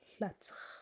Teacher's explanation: That word's tricky because it goes from the front of your mouth to the very back of your mouth very quickly.